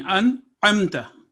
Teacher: आइन की आवाज वाजे और खुली होगी, और इसी तरह नून की भी क्लियर आवाज होगी